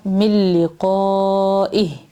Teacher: میم کو لام سے ملانا ہے آگے، نون بیچ میں سائلنٹ ہے